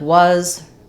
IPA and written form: wʌz (was)